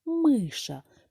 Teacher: Миша перший склад наголошений